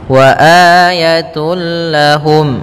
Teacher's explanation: masukkan tanwinnya tun langsung ke lam sehingga suara n-nya hilang langsung masuk ke lam · Wa ayatul lahum, langsung masuk lam dan tanwinnya hilang suaranya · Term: idgham bila ghunah, idgham bila gunnah